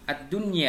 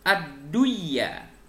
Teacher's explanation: membacanya jelas tanpa dengung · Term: idzhar wajib